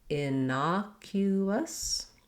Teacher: our letters CU say the K sound, the K sound, and then there's a glide. So this is one of the words in English where the letter U sounds like its name, sounds like the word you. · It sounds just like the word us, or you can even do a little bit of an is sound, just light and short and unstressed on that last syllable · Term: schwa